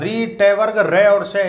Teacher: इनका उच्चारण स्थान होता है मूर्धा से, इसलिए इनको मूर्धन्य ध्वनि बोला जाता है